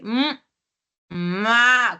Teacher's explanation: Entonces, el sonido de la P, de la B y de la M, o sea, ese sonido se da gracias a que se juntan los dos labios, ¿no? Y obstruyen el aire. Ya no sale el aire.